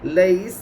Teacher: या साकिन से पहले ज़बर है, इसलिए या ऐलीन होगी। या ऐलीन को नरम आवाज़ के साथ जल्दी पढ़े, मारूफ पढ़े, मजहूल आवाज़ से बचे। सीन के ऊपर ज़बर है, ज़बर को जल्दी पढ़े, थोड़ा भी न खींचे।